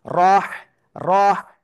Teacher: গলাটা চেপে মুখ দিয়ে হালকা বাতাস বের করে আমাদের উচ্চারণ করতে হবে